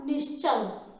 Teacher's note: विसर्ग के बाद यदि च छ आया, छ किसका है? तालव्य वर्ग का है, तो उसका श क्या होगा? तालव्य स।